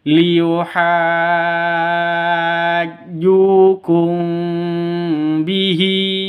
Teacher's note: cara bacanya samar didengungkan jadi ini dengung ya · Ikhfa safawi itu dengung, samar didengungkan, siap-siap ke huruf ba-nya. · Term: Ikhfa Syafawi